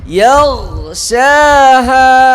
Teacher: ইয়াও বলে আওয়াজ একদম বন্ধ করে দেওয়া যাবে না, আওয়াজ জারি থাকবে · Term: গয়নার আওয়াজ